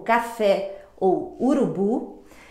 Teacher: oxítona, a sílaba tônica, a mais forte, está na última sílaba, como café ou urubu.